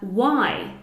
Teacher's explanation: We can't hear the H. We can only hear the W sound.